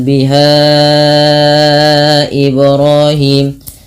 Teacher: ha dipanjangkan sepanjang empat atau lima harakat yang di mana di sini terdapat hukum tajwid berupa Mad Jaiz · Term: Mad Jaiz munfasil